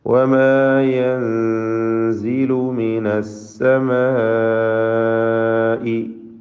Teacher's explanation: വമാ യൻസിലു മിനസ്സമാഇ, മദ് മുത്തസിൽ വാജിബ് വന്നിരിക്കുന്നു. അലിഫിനെ 4 or 5 ഹറക്കത്തിൻ്റെ അളവിൽ ദീർഘിപ്പിക്കൽ നിർബന്ധമാണ്.